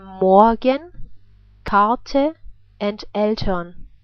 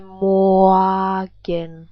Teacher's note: So it's pronounced like a reduced R sound before consonants.